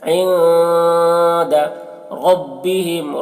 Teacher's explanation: نون میں اخفا کریں گے. عند ربهم را کو پر پڑھیں گے کیونکہ را کے اوپر زبر ہے · نون ساکن کے بعد دال حروف اخفا میں سے ہے. نون میں اخفا کریں گے.